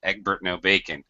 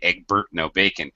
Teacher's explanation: the r sound is being dropped Eggbert no bacon we we don't say egg Burt no bacon